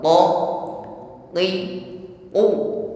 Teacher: kalau huruf q kan sifatnya murni syidah diucapkan dengan tekanan yang kuat